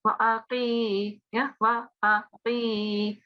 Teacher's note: don't prolong the a. It's just a single fatha.